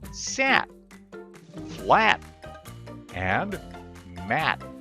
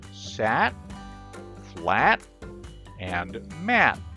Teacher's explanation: There are at least two times when you'll create a held T sound. First, when the T comes at the end of a word, this is when a held T sound is made